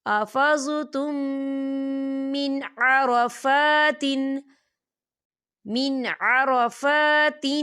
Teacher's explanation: میم ساکن کے بعد پھر میم آ رہا ہے تو یہاں پر ادغام شفوی ہوگا اور ہم اسے غننے کے ساتھ پڑھیں گے